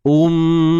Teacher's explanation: Tanwin bertemu dengan huruf waw. Di sini idgham bi gunnah.